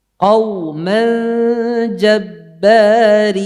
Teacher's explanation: Tipiskan wawunya, jangan qaw. Qaw itu tebal wawunya, tipiskan wawunya.